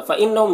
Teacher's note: نون مشدد غنہ کے ساتھ میں پڑھیں گے، ہم کے میم میں اظہار شفوی ہو رہا ہے، اسے جلد پڑھنا۔